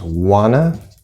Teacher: in this case, the T just completely disappears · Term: linking